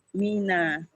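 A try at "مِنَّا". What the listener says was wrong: minna. Ada tasdidnya ya. Minna. Minna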